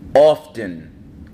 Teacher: And notice with the often, we pronounce the T.